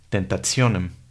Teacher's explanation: Con la PH y la TH sus sonidos son F y T respectivamente. Y una letra T seguida por una I más la A, E, O la U tienen un sonido complejo, que es el sonido de una TS.